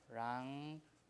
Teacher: There's no condition for palatalization, so it's a K. K is a vela sound, so N with a tail is also a vela sound.